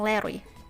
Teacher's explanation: the sides of the tongue are left low so that air can escape over its sides in fact the tongue is strongly flexed and air is forced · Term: lateral sound